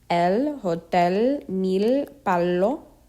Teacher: English L, but with the tip of the tongue touching the roof of the mouth.